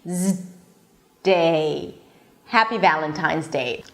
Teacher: So you're actually pronouncing the Z and then you're blocking it with the D.